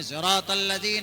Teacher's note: صاد کو تھوڑا ذات کی طرف امالہ کر کے پڑھتے ہیں